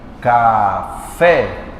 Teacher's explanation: na palavra café, a mais forte aqui é o fé. Café. O fé é mais forte, chamamos de oxítona.